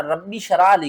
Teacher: جزم ہے، تو ہم نے با کو سختی سے پڑھنا ہے اور پھر اس با کو شین کے ساتھ بھی ملانا ہے